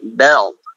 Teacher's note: ada istitolah itu lidah memanjang ya, lidah memanjang sehingga suaranya kayak suara ngerem gitu